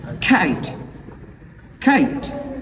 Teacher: when the same three stop consonant sounds, I mean p, t, k, comes at the end of a word, so that will be unaspirated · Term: unaspirated sound